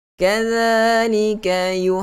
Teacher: Makhraj huruf zal, hujung lidah diletakkan sentuh kepada dua gigi kacip bahagian atas hadapan itu.